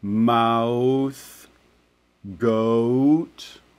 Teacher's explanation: these are like the OO sound, mouth, goat, right? So they're almost a W-like sound. These second half ones, they're usually less of an element of the diphthong, so they tend to be shorter. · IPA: aʊ